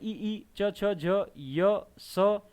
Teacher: तालु से बोले जा रहे हैं ई च छ झ य स, ये तालव्य वर्ण कहलाएंगे।